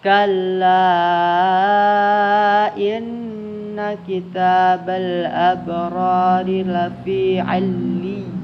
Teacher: In itu gunnah musyaddah, dengung tahan 2 harakat.